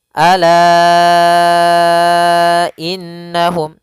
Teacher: setelah huruf mad di sini la dua harakat datang setahnya Hamzah maka lanya menjadi 4 harakat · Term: Mad Jaiz munfasil